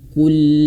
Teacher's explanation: Huruf qaf ini ayah bunda cara bacanya adalah dimoncongkan karena dia berharokat dhammah. Kul. Nah, kul, dan huruf lam dia sedikit dialirkan.